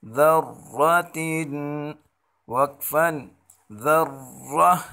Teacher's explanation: ذال را زبر ذر، را زبر را، اس را کو موٹا پڑھیں گے